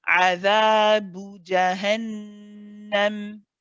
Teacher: Because we've made the letter before 2 counts, it's very easy to say adhabu. Okay, the boo, we can't make it too long. It has to stay as 1, and we go straight to the jim.